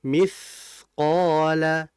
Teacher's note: Tha itu huruf yang mengalir atau bisa kita sebut dengan sifat rikho atau rokhoa. Jadi dibaca ngalir, jangan dipantul.